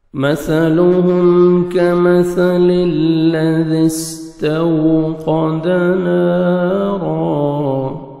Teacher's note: کاف کو باریک پڑھیں گے، سا کو نرمی سے ادا کریں گے، نہ سین میں مکس ہو ساؤنڈ اور نہ صاد میں ساؤنڈ مکس ہونا چاہیے۔ · مثلهم میم ساکن کا اظہار ہے، جلدی پڑھیں گے۔